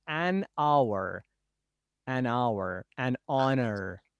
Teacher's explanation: Because of this pronunciation, because of this reading, we say use an, not a, before the words beginning with H. That H is not pronounced, like an hour, an honor.